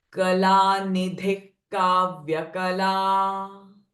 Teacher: Now here kala nidhihi. The visarga is getting followed by ka sound. So visarga sound will change from ha to ka. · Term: ka sound of visarga